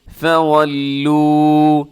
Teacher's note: اسے لمبا کیجیے گا، لو کو کیونکہ واو مدہ ہے